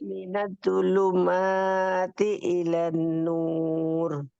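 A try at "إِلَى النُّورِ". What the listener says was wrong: ilan nur. Lannya tahan, ada nun tasydid.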